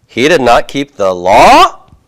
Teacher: I could leave the statement the way it is and have a rising intonation at the end.